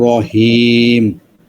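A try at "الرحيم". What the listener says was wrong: রহিম, হায়ের উচ্চারণটা এখনো ঠিক করেন নাই। রহিম।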